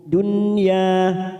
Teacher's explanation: nun sukun bertemu ya, namanya bacaan idhar wajib, kita baca jelas tanpa mendengung, dunya, ya kita panjangkan 2 harokat.